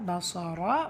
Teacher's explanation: ரா ஃபத்ஹா பெற்று வந்திருக்கு, வல்லினப்படுத்தி ஓதணும்